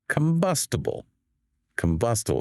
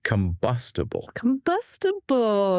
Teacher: See how the second syllable is stronger?